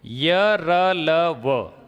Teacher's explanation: य र ल व ये तो स्वरों के जैसे ही है इसलिए गूंज इसमें होगी